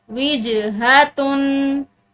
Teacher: यहाँ पर जीम जो है ये हरूफ क़लक़ला में से है तो इस जीम को हमने हिलाते हुए अदा करना है